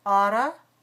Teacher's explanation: Second syllable is weak. Fourth syllable is weak.